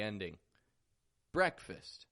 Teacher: Strong in the beginning, BREHK. And then fist. Flat, quick on the ending.